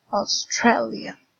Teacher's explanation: Here we have Australia, so the stress is in stre.